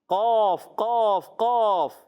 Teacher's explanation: जबान की जड़ और तालु के नरम हिस्से से अदा होता है